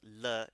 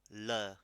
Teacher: So the L is actually rolled. So it's not a flat L like L, it's L. You flick your tongue.